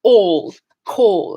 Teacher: my mouth for aw we don't have this sound in english if i were rounding my mouth for aw i would start to sound like a british person